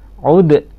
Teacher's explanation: dipantulkan ya udnya, dalnya, supaya tidak sama dengan huruf ta. Kalau udwan berarti dia huruf ta, tapi ini adalah qalqalah udwan, qalqalah sugro karena berada di tengah-tengah.